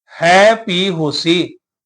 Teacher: ਹੈ ਤੇ ਭੀ ਦੋਨਾਂ ਨੂੰ ਵੱਖਰਾ ਕਰਕੇ ਪਾਠ ਕਰਾਂਗੇ